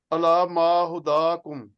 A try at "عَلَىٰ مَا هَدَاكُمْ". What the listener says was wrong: نہیں، ہے کے اوپر زبر ہے.